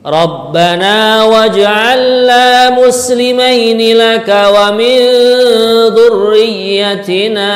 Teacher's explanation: kalimat waj'al ini ada jim dibaca qalqalah mantul